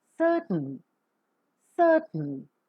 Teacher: This is the sound of central long vowel.